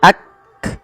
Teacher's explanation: Cara membacanya yaitu bacaan syiddahnya dulu, yaitu kaf itu ditahan suaranya ak, baru dikasih hamas. Hamas itu mengalirnya nafas. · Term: sifat syiddah dan sifat hamas